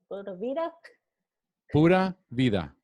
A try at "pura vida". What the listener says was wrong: Pura vida. With a P. Pura vida.